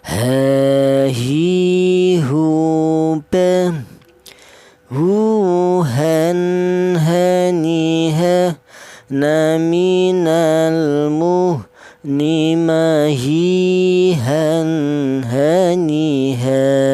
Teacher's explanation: Huruf ha keluarnya huruf berasal dari pangkal tenggorokan